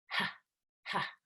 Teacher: Ha, ha. This is voiceless, and it's coming out of your throat. You are going to tense the vocal cords in your throat, but we're not actually vibrating them. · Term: H sound